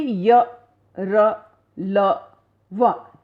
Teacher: इन व्यंजनों के उच्चारण में जीभ मुख के किसी भाग को पूरी तरह स्पर्श नहीं करती है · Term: अंतस्थ व्यंजन